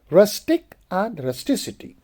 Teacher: And with the base rustic, the whole pronunciation chain, rustic, in addition to the shift in stress form first to the second syllable, the final k of the base becomes s when ity is added. For example, we say rusticity.